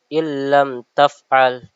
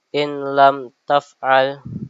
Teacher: Idgham bilhunah adalah apabila nun sukun atau tanwin bertemu dengan salah satu huruf la lam dan ro. Cara membacanya diidgamkan atau dimasukkan ee ke dalam huruf berikutnya tanpa memakai gunah · Jadi nun sukunnya ini tidak dibaca atau tanwin ini tidak baca langsung masuk ke huruf berikutnya tanpa diubah ee baca ee bacaan huruf berikutnya tersebut seperti itu. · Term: idgham bila ghunah